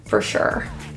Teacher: For sure, both of those words together, those vowels kind of disappear